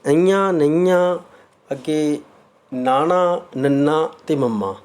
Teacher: ਅਨੁਨਾਸਕ ਵਿਅੰਜਨ ਉਹ ਧੁਨੀਆਂ ਹਨ ਜਿਨ੍ਹਾਂ ਦੇ ਉਚਾਰਨ ਸਮੇਂ ਕੁਝ ਆਵਾਜ਼ ਨੱਕ ਵਿੱਚੋਂ ਨਿਕਲਦੀ ਹੈ।